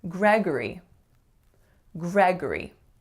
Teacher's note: Three syllables. And the second syllable has to reduce to schwa. For this name, I often hear something like Gregory, but we don't say that O or sound, we say G.